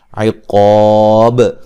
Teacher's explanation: جب وقف کریں گے با پہ قلقلہ کریں گے